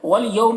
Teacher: واولین کو نرم آواز کے ساتھ جلد پڑھنا ہے